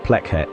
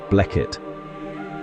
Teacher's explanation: P becomes voiced B